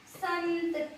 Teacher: अनुस्वार का उच्चारण जब हम करते हैं तो इसका उच्चारण करते समय मुख के साथ साथ नासिका का भी प्रयोग होता है